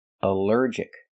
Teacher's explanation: Here the al is not pronounced all but pronounced uh like in cup and up because it's not stressed.